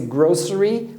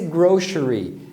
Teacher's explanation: Pode ser grocery, com som de S, e pode ser grocery, com um som de X